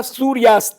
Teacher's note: सूर्य में अ, अस्त का अ, दीर्घ संधि हो गई